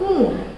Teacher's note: the sound in the word moon, which is a oo sound. It's a longer sound.